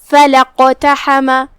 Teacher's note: قاف کی ادائیگی زبان کے جڑ اور تالو کے نرم حصے سے ہے اور قاف پہ جزم ہے، تو یہاں قاف کا حکم ہے قلقلہ · کلمت اقتحم میں یہاں شروعات میں حمزۃ وصل ہے. حمزۃ وصل لکھا جاتا لیکن ہم اسے ادا نہیں کرتے، لہذا ہم کلمت فلا کے بعد سیدھا حرف القاف پڑھیں گے.